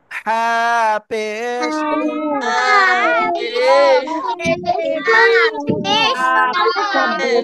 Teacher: হা পেশ হু গলাটা চেপে উচ্চারণ করতে হবে